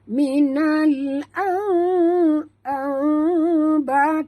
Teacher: Ini iqlab, kira-kira boleh lalu sehelai kertas di antara bibir, ya. Jadi kita baca bukannya minal amba amba, bukan amba, tapi bunyi dia minal amba, tak rapat ya.